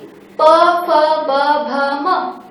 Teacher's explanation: जाता है दात दांत में ज्यादा जोड़ दिया जाता है और प वर्ग का उच्चारण होठों पर ज्यादा बल लगा के किया जाता है · प फ ब भ म, मैं उच्चारण कर रही हूँ तो मेरे दोनों होठ जुड़ रहे हैं, तो ये हो गया प वर्ग।